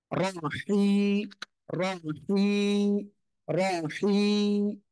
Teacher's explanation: গলাটা চেপে মুখ দিয়ে হালকা বাতাস বের করে উচ্চারণ করবেন